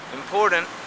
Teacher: glottalization can happen, for example, when the T sound comes after an N, for example, important, where at the end there's a glottalization, instead of saying important, you say important.